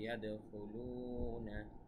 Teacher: ইয়াদখুলুনা, ইয়াদ এখানে কলকলা, খুলু এখানে এক আলিফ টান